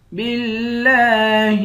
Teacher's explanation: لفظ اللہ کے لام کو باریک پڑھیں گے، لفظ اللہ کے لام پر کھڑا زبر ہے، اس کو ایک الف کی مقدار کھینچ کر پڑھیں گے، ہا کو لام سے ملائیں گے۔